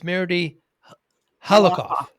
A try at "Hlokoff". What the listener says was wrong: Hlokoff. The H is silent.